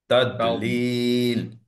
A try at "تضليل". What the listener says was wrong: না, দায়ের মাখরাজটা ঠিক হচ্ছে না। Molar teeth. না, কলকলা